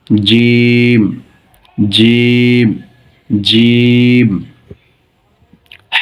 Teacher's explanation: উচ্চারণের স্থান জিহ্বার মধ্যখান উপরের তালুর সাথে লাগিয়ে শক্ত করে বের হবে